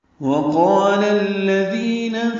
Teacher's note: وقال میں واو ہونٹ کی نا تمام گلائی سے ادا کریں گے، قاف پر پڑھیں گے اور اس کا الف مدہ بھی پر ہے، لام باریک ہے اور الذین کے لام سے ملا دیں گے